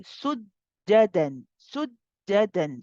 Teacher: We have a jim with a shadda. So this jim is normally a qalqala letter. So again, we do not do the qalqala in this case.